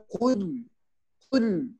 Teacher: Itu harus tebal. Letaknya ko itu di lidah paling belakang, diangkat lidahnya, diarahkan ke langit-langit belakang juga.